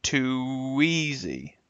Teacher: Now notice we're using the W as our glide.